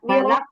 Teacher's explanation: قل أعوذ برب الفلق. এই যে ফালাক, লামে টান হয়ে যায়, টান হবে না।